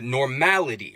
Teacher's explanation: We're stressing that mal syllable.